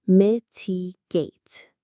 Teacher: The stress is right on the first part.